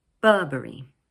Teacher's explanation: This word is made up of 3 syllables, Burberry, with the stress placed on the first one, Burberry. Notice that in British English, the middle R sound is not usually pronounced.